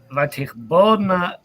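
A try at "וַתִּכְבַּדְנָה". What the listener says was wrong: Badna. Why tichbadna and not tichbodna? Because it's a stative verb. The statives tend to take a in that syllable. Tichbad, tichbod.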